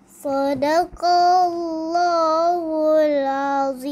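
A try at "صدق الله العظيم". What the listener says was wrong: Okay, ayah nak tinggi sikit. Sadaqallahul Azim. Tinggi.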